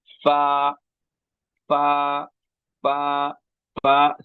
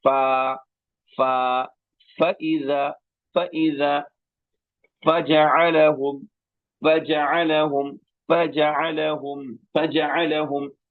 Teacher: ثنایا علیا کا کنارہ نیچے کے ہونٹ کی تری والا حصہ، اس سے فا ادا ہوتا ہے